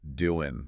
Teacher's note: that final G sound frequently gets dropped in informal speech.